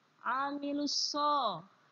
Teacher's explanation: Nah, amilus so, ada alif lam bertemu dengan huruf shad. Nah, huruf shad itu termasuk huruf idgham syamsiyah. Maka alnya tidak terbaca.